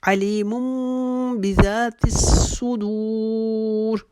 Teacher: چونکہ وقف تام سے پہلے آخری لفظ صدور تھا، اس کو ہم 2-2.5 حرفوں کے برابر بھی کھینچ کے پڑھ سکتے ہیں